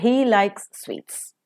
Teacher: sweets is the nucleus that we have made and sweets will receive a falling tone because it's an ordinary sentence without any implications so by applying